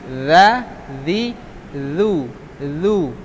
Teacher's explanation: Ini hurufnya zal, ujung lidah, ujung gigi.